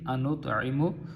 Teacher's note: انطعم نہیں پڑھیں گے بلکہ انطعم تو کو ہم پور کر کے پڑھیں گے